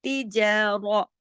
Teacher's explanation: रा मोटा पढ़ा जाएगा